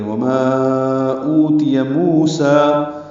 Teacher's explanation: واو مدہ اور کھڑا زبر 2 حرکات لمبے کریں گے